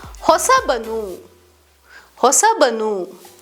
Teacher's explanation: While hosa normally combines with avanu to form hosavanu, the va sound changes to ba when forming hosabanu. This phonetic change is due to the natural tendency in Kannada to use ba when combining with avanu or similar forms for smoother pronunciation.